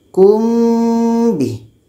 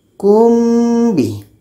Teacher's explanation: Kita baca samar dan dua-dua huruf ini terletak pada bibir. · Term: ikhfa syafawi